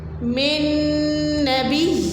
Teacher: ملا دیں گے اور پھر ایک نون کی آواز آئے گی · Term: مدغم